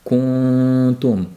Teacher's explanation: Ayrimlarda ku degandagi zamma holatda labimiz qolib, kuntum bo'lib ixfo qilinish holatlari bor.